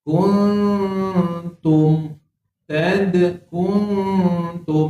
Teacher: Ni nun kosong ni. Jadi samarkan dia dengung samar dua harakat. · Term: Ikhfa hakiki